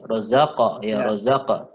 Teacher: Qalqalahnya dibaca tafkhim tebal ya.